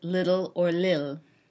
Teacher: syllabalizing the final L in words such as little or lil